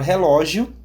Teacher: Na palavra relógio, temos ali duas vogais na última sílaba, sendo que o I é mais fraco do que o O na última sílaba. Então, I, semivogal, e O é a vogal dessa sílaba.